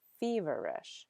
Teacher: you'll see the accent on the first syllable that's where the stress is